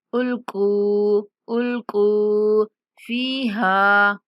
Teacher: काफ को पुर पढ़ते हुए 1 सेकंड तक लंबा करेंगे। काफ के बाद वाव मद्दा है।